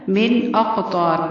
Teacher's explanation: نون ساکن کے بعد حمزہ ہے اس لیے اظہار ہوگا، مطلب غنہ اور اخفا نہیں کرنا. من اقطا، اقطا قاف کو ہلانا ہے، کلکلا کرنا ہے.